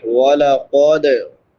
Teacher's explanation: वाला कद क़ाफ हरूफ मुसालिया में से है, इसको पुर पढ़ेंगे। दाल हरूफ कलकला में से है, इसमें कलकला करेंगे।